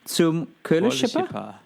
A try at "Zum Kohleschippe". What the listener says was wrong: doesn't have an umlaut. I think it's zum Kohleschippe. It's the Kohle, which means the.